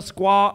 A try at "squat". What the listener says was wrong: He doesn't pronounce his T's. Squat.